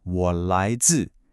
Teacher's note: The dip of 我, the rise of 来, and the fall of 自.